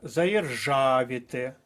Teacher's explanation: заєржавіти наголос на третій склад